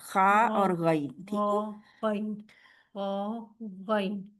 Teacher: यानी कि हमारे गले से और ख और गन जो है वो बिल्कुल हल्के के आखरी हिस्से से। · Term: हरूफ हल्की